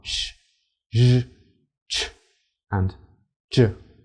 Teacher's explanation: between the alveolar Ridge and the hard palate the English postalveolar sounds are